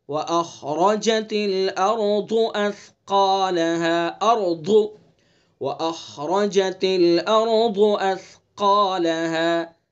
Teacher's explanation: خا کو پر پڑھیں گے اور خا کا مخرج ادنائے حلق یعنی منہ کی طرف والا حصہ۔